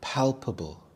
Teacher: The stress is on the first syllable. Pal.